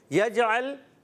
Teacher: جیم میں قلقلہ کر کے جائیں گے، حرف قلقلہ ہے